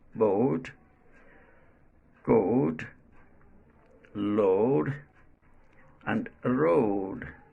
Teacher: And the fifth one is o. This vowel sound starts at o, short round vowel, o, and glides to u, as in boat, coat, load, and road.